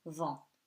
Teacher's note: UN becomes nasal before the consonant, and T at the end is a consonant that is silent